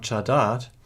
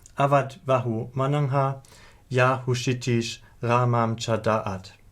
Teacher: a sequence of 2 short vowels a, separated by a former laryngeal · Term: glottal stop